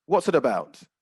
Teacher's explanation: you've got four separate words they're written as four separate words but in speaking they'd be spoken almost as if it was one word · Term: linking of sounds